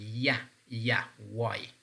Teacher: And then we have palatal sounds like, for example, ya, y, that we have in English.